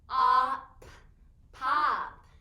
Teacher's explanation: did you hear how the o in pop is short because it says ah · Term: short o